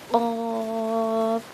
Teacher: یہ قاف موٹا والا قاف ہے، اس کو ہم پڑھیں گے حلق سے نکالیں گے. قاف.